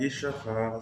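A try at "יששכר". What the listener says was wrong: Not bad, but the shin in Yisachar is a sin. It's a sin.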